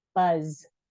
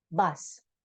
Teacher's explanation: So S and Z are actually the same exact sound. The only difference is when we make a Z, the vocal cords are vibrating and moving, and the S is a voiceless sound. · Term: voicing